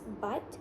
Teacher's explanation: The tongue is positioned in an open mid-high and it articulates towards the back of the mouth. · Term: lax back vowels